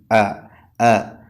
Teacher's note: തൊണ്ടയുടെ അടിഭാഗത്തുനിന്നാണല്ലോ ഹംസ ഉച്ചരിക്കേണ്ടത്